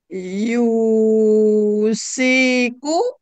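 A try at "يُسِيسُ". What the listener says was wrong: Yusisu. Kenapa jadi siku?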